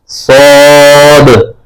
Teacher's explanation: صاد میں اخیر میں دال کی آواز آئے گی قلقلے کی طرح